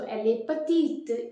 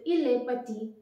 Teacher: In the feminine, we have to pronounce the consonant because of the final vowel E.